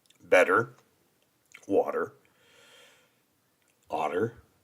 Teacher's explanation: I do pronounce my te's like D's